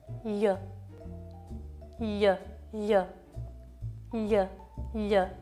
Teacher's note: viene prodotta dallo slittamento della lingua in avanti e dal suo distacco dal palato l'aria non deve uscire dai lati